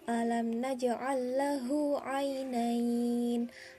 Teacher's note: Alam naj itu termasuk ke dalam hukum mim sukun bertemu dengan selain mim dan ba, dibaca idhar syafawi, yaitu dibaca jelas.